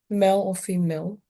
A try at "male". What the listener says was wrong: Okay, because it sounds like you say mole. And it's not a mole. It's a male.